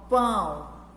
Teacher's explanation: Pão tem um som nasal, porque quando nós vemos o tio, nós já lembramos que essa palavra vai sair pelo nariz. O som de ão vai sair pelo nariz.